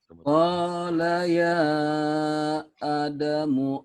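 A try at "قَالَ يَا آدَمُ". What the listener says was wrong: A-nya panjang. Ya Adamu. Ya A-nya mad asli.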